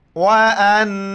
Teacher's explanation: وان نون ساکن ہے، یہاں پر اخفا مال غنہ کریں گے